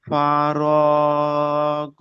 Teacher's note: আলিফ মাদ্দা এক আলিফ পরিমাণ টান দিয়ে পড়তে হয়।